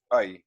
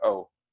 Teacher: it as Oh which is the much more common way but for the Yiddish speaker out there they would actually pronounce this as AI instead of oh